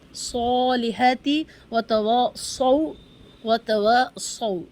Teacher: اس آیت میں ہر جگہ صاد کو موٹا پڑھیں، سیٹی کی آواز کے ساتھ پڑھیں. سین اور صاد میں صرف صفت کا فرق ہے، وہ یہ کہ سین کی آواز باریک یعنی اے ساؤنڈ کے ساتھ، صاد کی آواز موٹی یعنی او ساؤنڈ کے ساتھ.